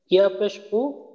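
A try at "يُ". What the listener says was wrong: আপনার টান ঠিক আছে, টান ঠিক আছে, টানের সমস্যা নেই। সমস্যা হলো ইয়ার উচ্চারণটা ইয়া পেশ ইউ, ইয়া পেশ যেন উ হামজার মতো উ না হয়, ইয়া পেশ ইউ আর ইয়া ওয়াও পেশ ইউ।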